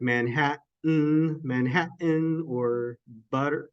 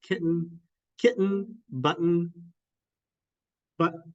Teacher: a glottal stop is in the middle of words like Manhattan · that's a glottal stop that is your vocal folds doing this